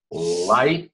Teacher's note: The sound is coming through the side of your tongue.